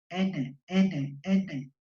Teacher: La N es alveolar igualmente. · Es sonora porque el sonido va a aparecer por donde, por mis fosas nasales. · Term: consonantes nasales